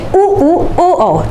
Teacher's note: तो उ और ओ में आपके होठ की स्थिति गोल हो जाएगी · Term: गोलाकार